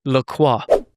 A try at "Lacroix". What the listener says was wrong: You got to hock that R a little bit, Lacroix.